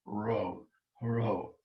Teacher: which is ro um it's not uh like a spanish but neither is it an english american r it's um an aspirated r